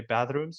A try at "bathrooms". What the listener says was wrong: In their bathrooms, So it's not clear to me that the candidate's saying bathroom. It sounds like it's somewhere in between bathroom and bedroom. Bathroom and bedroom. in their bathrooms. So that sound doesn't really come through. We get the duh.